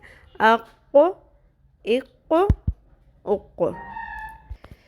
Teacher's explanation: اقو پر صحیح ہونٹوں کو گول رکھنا ہے آخر تک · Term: 2 نقطوں والی قوف